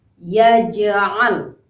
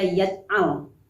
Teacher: huruf jim yang berbaris sukun atau mati, sehingga dia dimasukkan ke dalam golongan qalqalah sughra, yaitu bunyi hurufnya seperti memantul. Ya, kita baca secara memantul, bunyinya seperti yaj'al.